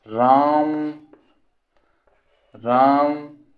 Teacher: फ्लूत स्वर आप देखे होंगे, जैसे हम उच्चारण करते हैं राम राम, अब यही राम कहने में हमको दीर्घ स्वर से भी अधिक समय लग रहा है।